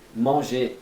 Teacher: Você não fala o R no final.